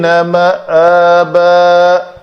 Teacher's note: اس کو تکلف کر کے معابا کہیں عین کی طرف نہیں لے جانا۔